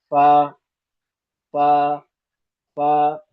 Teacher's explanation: فا کا مخرج یہ ہے کہ سامنے کے اوپر کے جو دانت ہیں نیچے کے ہونٹ سے مل کر فا ادا ہوتی ہے، سامنے کے اوپر کے دانت نیچے کے ہونٹ سے ملائیں گے